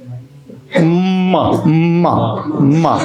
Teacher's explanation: से चले जाएगा म नाक बंद अगर म बोलो आएगा नहीं होठ बंद करके वो हवा नाक से देना पड़ेगा तभी उच्चारण होगा हां और एक चीज देखना ये जो बड़ा